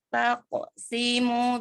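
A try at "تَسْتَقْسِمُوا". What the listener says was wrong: Oke, masih simu masih panjangnya 1, harusnya 2.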